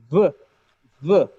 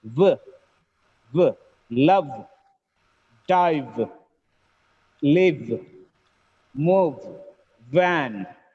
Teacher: you can experience a friction, a small vibration between the lips. V, V. When you produce the sound V, there should be a friction.